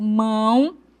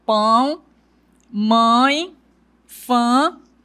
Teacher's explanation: Observe que eu fecho mais a boca e o som vai para o meu nariz. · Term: nasalização